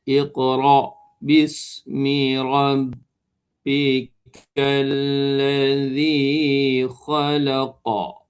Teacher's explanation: Qalqalah yang perlahan. Lantunan yang kecillah.